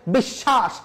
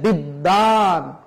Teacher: শব্দের মাঝে যদি ব ফলা থাকে তাহলে ব ফলা উচ্চারিত হয় না, কিন্তু যুক্ত ব্যঞ্জনের দ্বিত্ব হয়।